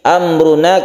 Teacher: Syafawi artinya bibir, maksudnya adalah mim itu makhrajnya ada di bibir atau syafawi. Amruna karena izhar maka tidak berdengung. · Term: izhar syafawi, idhar syafawi